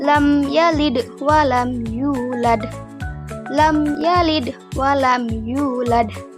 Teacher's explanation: Tidak ada dengung dan dibaca jelas. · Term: izhar syafawi